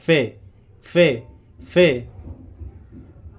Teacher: ऊपर के दांतों का किनारा नीचे के होट से लगाएंगे तो फे अदा हो जाएगा